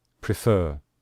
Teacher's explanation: we stress the final syllable